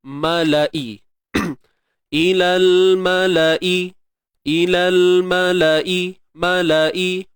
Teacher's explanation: Ma satu harakat. La satu harakat. I satu harakat.